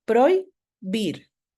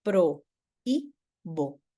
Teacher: tengo un diptongo sí lo pronuncio en la misma sílaba